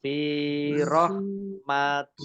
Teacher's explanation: Allahnya dibaca tipis, karena harokat di depannya kasroh